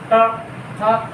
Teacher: देखो ट हम बोलते क्या है, ट, तो जीभ पलट करके ऊपर स्पर्श करती है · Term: मूर्धा